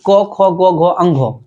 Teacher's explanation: तो कवर्ग का उच्चारण स्थान कंठ है। इसका मतलब हुआ को का उच्चारण स्थान कंठ हो गया, खो का उच्चारण स्थान कंठ हो गया, गो का उच्चारण स्थान कंठ हो गया, घो अंगो सबका उच्चारण स्थान क्या हो जाएगा?